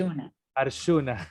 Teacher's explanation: los argentinos normalmente dicen Arjuna, como si fuera SH.